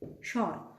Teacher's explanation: when sha and ba gets combined together, this ba doesn't get pronounced. We do not pronounce the ba, we just consider the sha.